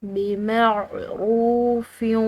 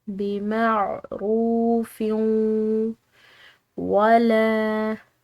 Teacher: فا کی تنوین ہے، اس کے بعد واو ہے جو کہ 4 حروف یا واو میم اور نون میں سے ہے تو اس پر ہم نے ادغام بالغنہ کرنا ہے